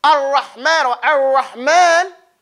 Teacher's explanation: The lam will enter upon the ra and you won't hear anything. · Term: complete idgham